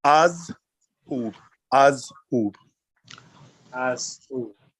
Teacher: When you're pronouncing the command tense, it's two syllables, but there is a pause. There's a pause in the first syllable. · most people run the Z and the U together and you don't really hear the H